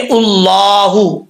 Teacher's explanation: अल्लाह के नाम से पहले पेश है तो अल्लाह का नाम पुर पढ़ा जाएगा